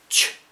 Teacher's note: Okay, we said vocal cords open, so it's voiceless, and there's no nose in there, so it's not nasal, and it's between the alveolar ridge behind the teeth and the palate, the hard palate. It's got this funny name, palatoalveolar, so that kind of means between the two.